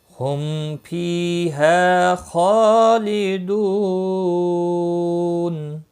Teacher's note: دو واو مدہ ہے، ایک الف کے برابر کھینچ کر پڑھیں گے، اور نون وقف کی صورت میں نون ساکن پڑھا جائے گا، وقف بالاسکان ہوگا، مد العارض وقفی ہوگا، 3 سے 5 سیکنڈ کے برابر کھینچ کر وقف کریں گے